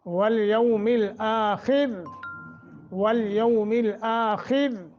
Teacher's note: آخر آپ کھڑی زبر ہے, خا موٹا, را باریک